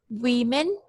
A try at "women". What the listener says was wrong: I would just like to make one small pronunciation correction. When you said the word women, it sounded a little bit more like wemen. So listen to the difference. So it's women, wemen.